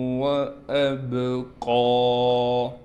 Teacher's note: حمزہ کو صاف کر کے واضح پڑھنا ہے، با پر قلقلہ کیا جائے گا۔ قاف پر کڑا زبر ہونے کی وجہ سے قاف کو کھینچیں گے بھی اور قاف کو موٹا بھی کر کے پڑھیں گے